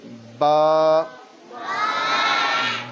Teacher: दोनों होंठों के अंदर वाले हिस्से के मिलने से